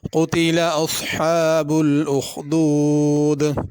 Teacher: قتلہ میں بڑا قاف ہے، اس کو قتلہ چھوٹا قاف کر کے نہیں پڑھنا